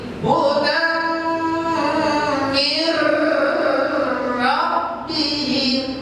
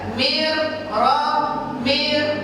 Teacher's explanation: Idgham memasukkan bila tanpa guna dengung. Jadi masukkan ke ro tidak boleh didengungkan. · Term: idgham bila guna